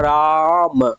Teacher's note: रा और म के बीच में इसमें एक लंबा गैप है ना, खींचा जा रहा राम। ठीक है, इसको हम डिनोट कैसे करते हैं, जैसे लिखा गया है ना रा, इसको ऐसे यस जैसा है, अंग्रेजी भाषा का जो यस है इसके प्रकार से ऐसे दिखाया जाता है। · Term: प्लुत स्वर